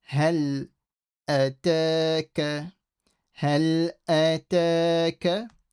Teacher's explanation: Ha from the middle of the throat.